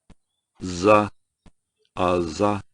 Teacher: suena como, hay como una vibración, la típica vibración de cuando algo es sonoro. Entonces, za, za, ya.